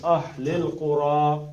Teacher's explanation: اہل القرا کو قاف موٹا را بھی موٹا